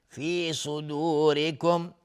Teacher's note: صاد از حروف استعلاء غلیظ تلفظ میشه. را حکمش ترقیق چون کسره داره.